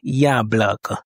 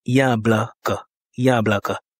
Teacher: L'accentuation est sur le ya. Ya bl. Il y a trois voyelles, donc trois syllabes.